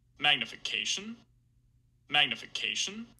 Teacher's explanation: there's also a little bit creaky voice there as well